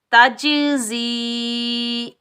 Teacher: जा सख्ती और सीटी वाला हरफ है, تو زا پر ہم سیٹی کی آواز نکالیں گے، زا کے نیچے زیر، زا کو ہم یائے ساکن کے ساتھ ملائیں گے، یہ یائے مدہ ہے، اس کو ہم ایک الف کی مقدار کھینچ کر ادا کریں گے۔ تا، جیم، زبر تج، زا، یا، زیر زی، تجزی۔ · तो यहाँ हम कलकला करेंगे, डबल साउंड आएगा, टकराव पैदा होगा और बगैर खींचे पढ़ेंगे